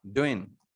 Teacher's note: a few native speaker, they can drop G here and they will say only doing.